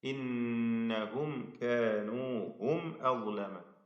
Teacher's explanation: വീണ്ടും നൂൻ മുഷദ്ദദ മണിക്കുക. സാക്കിനായ മീമിനെ ഇൽഹാർ ഷഫവി മണിക്കാതെ വെളിവാക്കുക